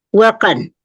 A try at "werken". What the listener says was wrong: Werken, bukan worken, tapi werken.